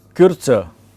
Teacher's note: when there is the umlaut, there has to be a Y sound that has to come in